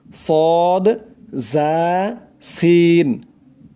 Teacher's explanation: ও আগার সঙ্গে লাগাইয়া উচ্চারণ হয় তিনটি অক্ষর সদ জা সিন তিনটি অক্ষর শীষ দিয়ে উচ্চারণ হবে